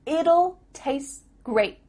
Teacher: here we have tastes here we're cutting off the T